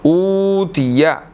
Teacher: الف کے بعد واو مدہ ہے تو اس کو 1 سیکنڈ تھوڑا سا کھینچ کر پڑھنا ہے